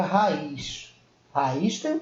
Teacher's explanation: a sequência de duas vogais porém pronunciadas em sílabas separadas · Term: hiato